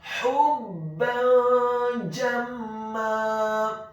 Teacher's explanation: Kata jamma, huruf jimnya dibaca tafkhim tebal fathah 1 harokat, huruf mimnya ditasydidkan dengan gunnah atau dengung · Dalam hal ini adalah huruf ba yang harokatnya adalah fathah tanwin bertemu dengan huruf-huruf ikhfa, di antaranya adalah huruf jim yang fathah. Maka hukum bacaannya adalah dibaca secara samar-samar, ikhfa · huruf ha-nya dibaca tipis, tarqiq nyaring dan halus dhammah 1 harokat